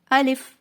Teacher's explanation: الف منہ کے خالی حصے سے ادا ہوتا ہے، آ کو لمبا نہیں کرنا، لام کو لمبا نہیں کرنا بلکہ جلدی سے ادا کرنا ہے